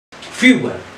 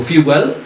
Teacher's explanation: So fuel, we stressed on the first syllable.